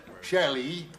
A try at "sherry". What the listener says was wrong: No, sherry. No, sherry. You're saying Shelley. Shelley.